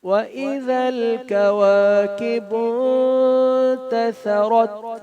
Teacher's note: نون ساکن پر اخفا کرتے ہیں اور ثا اس میں سیٹی نہیں ہوگی، را کو موٹا پڑھیں گے.